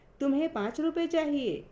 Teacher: यहाँ तुम्हें पर बल दिया जा रहा है